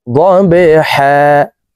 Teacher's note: কলকলার হরফ নিচের দিকে ধাবিত করে ধাক্কা দিয়ে উচ্চারণ করব